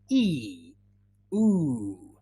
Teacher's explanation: so it's a long E, and your lips are spread as if you were really happy